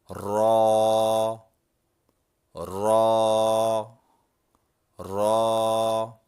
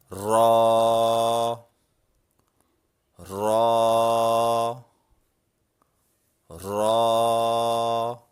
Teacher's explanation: را کو ہلکے جھٹکے کے ساتھ ادا کیا جاتا ہے · را کو ادا کرتے وقت زبان کی نوک اوپر کے نرم تالو سے ہلکا سا ٹکراتی ہے۔ را، را، را۔